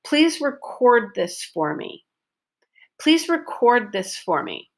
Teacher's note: So your stress is on syllable number 2 with a long O sound.